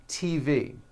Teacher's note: the T sound is an unvoiced sound like in the name Tom or the word TV